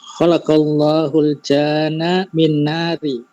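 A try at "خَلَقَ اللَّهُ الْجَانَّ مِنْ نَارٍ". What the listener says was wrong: Iya, khalaqal janna min nari. Allah menciptakan jin dari dari api ya, min narin. Narin ya. Tetap di tanwin ya, tetap di tanwin.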